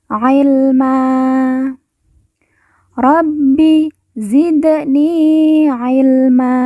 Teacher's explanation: Zidni Ilma Man karena waqaf atau berhenti kita baca Ma dan Ma kita baca panjang dua harakat